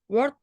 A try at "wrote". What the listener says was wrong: Wrote, wrote, wrote. Jadi W-nya nggak usah dibaca. Kalau W itu nggak usah dibaca. Kayak write, write ya. W-nya juga nggak usah dibaca. Write ya, write, wrote, written. W-nya nggak usah dibaca ya.